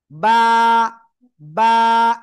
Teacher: একালিফ টান, দুই ঠোঁটের ভিজা অংশ থেকে